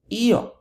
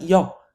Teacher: What if the emphasis actually falls on that I and it's pronounced io, not yo, io? Well, then we have to retain that I that the stress falls on.